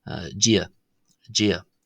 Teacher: the ia there is a diphthong (a combination of two vowels pronounced in rapid succession)